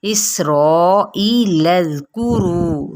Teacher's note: रू पे वाव मद्दा, एक अलिफ या 2 हरकात के बराबर